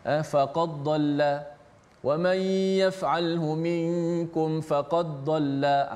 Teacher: Dibaca dengan idgham, dibaca dengan memasukkan dal ke dalam dad